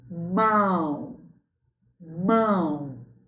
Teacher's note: Isso, é um ditongo decrescente. Temos uma vogal e depois uma semivogal.